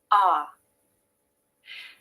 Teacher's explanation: to make the ah vowel the jaw is open the tongue is low in the mouth and this is key there is a little bit of tension in the back of the tongue